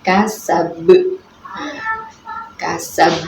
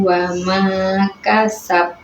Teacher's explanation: Sab ini adalah Qalqalah Kubra. sebab Qalqalah yang matinya diwaqafkan.